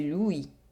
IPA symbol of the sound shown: wi